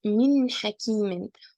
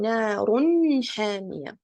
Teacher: I have a nun sakina here followed by ha. Okay, so I need to pronounce it clearly.